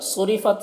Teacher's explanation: صرفت، صاد حروف مستعلیہ میں سے، اسے پر پڑھیں گے۔